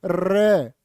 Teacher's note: र जीभ कांप जाएगी तुम्हारी र को प्र कंपित भी बोलते हैं और लुंठित भी कहते हैं लुंठित भी प्र कंपित भी और